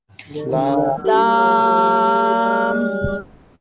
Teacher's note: লাম জিহ্বার আগার কিনারা উপরে মাড়ির দাঁতের সঙ্গে যেকোনো একপাশে লাগিয়ে আপনারা উচ্চারণ করবেন